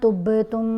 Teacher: बा की आवाज़ को हिलाकर पढ़ा जाएगा। कलकला वाले जो हरूफ हैं वो 5 हैं, क़ौफ़, तौ, बा, जीम, दाल।